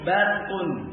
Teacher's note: Ra depannya adalah mufakhamah karena ra disukun, sebelumnya fathah. Adalah ra yang dibaca tafkhim, dibaca tebal. Kemudian depannya juga qaf, ya, dari huruf yang musta'liyah.